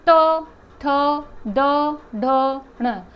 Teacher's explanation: आपकी जीभ नीचे से उठ के ऊपर उसको टच करेगी, तो वो क्या है आपका मूर्धा।